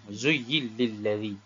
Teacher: Zuyyil lilladhi dengan idgham, memasukkan huruf nun ke dalam huruf lam. Memasukkan huruf nun tersebut, nun ni, ke dalam huruf lam.